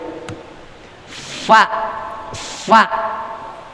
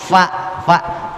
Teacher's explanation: gigi seri bagian atas bertemu dengan perut bibir bagian bawah. Yang rada gendut dikit, yang tembeman dikit. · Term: huruf fa